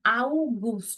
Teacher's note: this is a tricky sound where you have two vowels coming together. Ah and u.